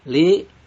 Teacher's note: Li mad tabi'i karena ada kasroh diikuti dengan ya sukun dibaca panjang 2 harokat